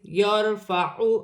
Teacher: را ساکن سے پہلے زبر ہے، را موٹی پڑھی جائے گی۔